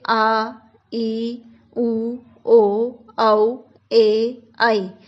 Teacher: इन स्वरों के उच्चारण में जो है ह्रस्व स्वर से दुगना समय लगता है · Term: दीर्घ स्वर